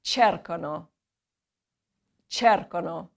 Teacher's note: The accent's on the first syllable